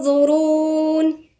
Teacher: يبقى كأني وأنا بغن متجهة بلساني ناحية حرف الظاء، بس ما حطيتش لساني عليه، أنا بتجه بلساني ليه وبفخم الغنة. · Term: غنة مفخمة